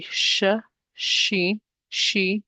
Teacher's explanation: you will feel the middle part of the tongue raise up. The letter sheen, sh, is a light letter, sheen, sh.